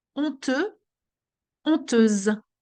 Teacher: The Z sound, that's the Z sound that we have because the S is between two vowels. You see, honteuse, there's a U, a S, and a E.